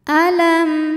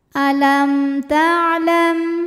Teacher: Ada hukum idhar syafawi karena mim sukun menghadapi huruf selain mim dan ba, maka mim sukun dibaca jelas.